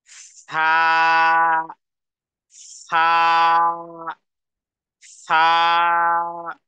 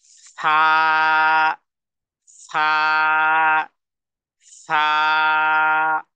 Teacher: জিহ্বার আগা সামনের উপরের দাঁতের আগার সাথে লাগিয়ে দুই হারাকাত পরিমাণ টেনে পড়ব।